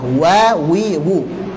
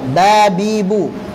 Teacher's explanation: Untuk huruf waw, dua bibir tidak nempel dan dimonyongkan. Sudah, wa, wi, wu. Untuk ba, dua bibir nempel, babibu.